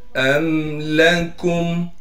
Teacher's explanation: हमज़ा को मीम से मिलाएंगे बगैर गुन्ने के